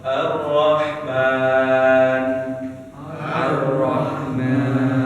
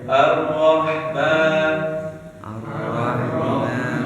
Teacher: Jadi penyebutan huruf ro yang benar itu tidak banyak getaran.